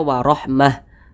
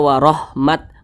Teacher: kalau misalkan kita berhenti pada huruf ta marbutah kemudian huruf ta tersebut kita sukunkan maka huruf ta itu diganti menjadi huruf ha maka ini dibaca warahmah Jangan dibaca warahmat warah ini kita baca